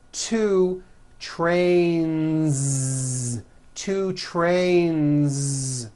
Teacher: two trains with a voiced Z ending